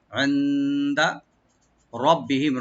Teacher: রটাকে একটু মোটা করে পড়বো, আর বাকে ডাবল করে বি বলবো। আর এখানে আমরা থেমে যাবো, এখানে থেমে যাবো, ওয়াকফ করার এখানে উপর চিহ্নটা আছে, এই চিহ্নটা থাকলে এখানে ওয়াকফ করতে হবে।